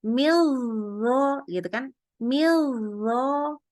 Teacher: kalau kita langsung bacanya tasdid kan lidah kita langsung naik tuh pangkal lidahnya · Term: ikhfa hakiki